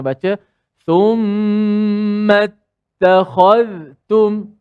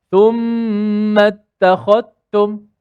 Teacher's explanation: Izhar ni maksudnya kita jelaskan zal tu mati. Bukan idgham. Idgham masukkan zal dalam ta. Jadi kita kena baca thumma ittakhadhtum.